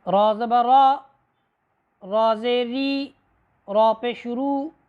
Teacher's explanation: زبان کی نوک مائل بپشت تالو کے ساتھ لگنے سے حرف را ادا ہوتی ہے